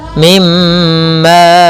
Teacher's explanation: Ini kita namakan dengan bacaan idgham mimi, yaitu mim matinya kita masukkan kepada huruf mim dan ditahan